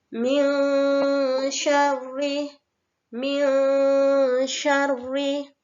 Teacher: Bunyi min syarri yaitu harus dibaca samar karena ini dinamakan bacaan ikhfa. Maka tidak boleh jelas ataupun mendengung, harus samar.